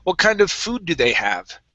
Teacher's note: our voice is going to go up on food and down for the rest of the question